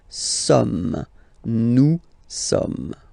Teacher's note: so you don't pronounce the final S here, it doesn't exist